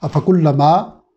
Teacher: فا کو باریک، کاف کو باریک، لام پہ تشدید کا لحاظ رکھنا ہے، میم پہ زبر ہے، 1 الف کے برابر لمبا کریں گے۔